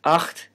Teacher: acht which means eight has a velar fricative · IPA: [ a x t ]